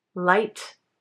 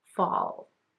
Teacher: For example, in English, the L sound in light is different from the L in fall. The first one with the letter at the start of a word sounds lighter, while the second one with the L at the end of the word sounds darker.